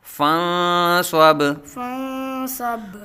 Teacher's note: با ساکن میں قلقلہ خوب ظاہر کریں گے، کیونکہ با حروف قلقلہ میں سے ہے